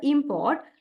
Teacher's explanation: primary stress on the first syllable, and next one is secondary stress.